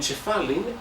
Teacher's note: It has the ch sound from Cypriot and the n at the end